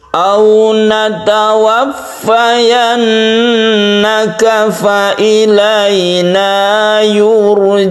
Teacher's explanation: yurja'un ini kita tebalkan roknya karena sebelumnya ada domah